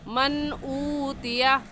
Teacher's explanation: نون ساکن کے بعد حمزہ آ گیا ہے حروف حلقی میں سے، تو اس نون ساکن پر غنہ نہیں کریں گے اور ایسے پڑھ جائیں گے من اوتیا، اوتیا کو کھینچ کر